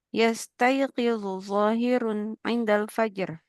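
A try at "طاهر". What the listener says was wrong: Bukan zahir tapi tahir.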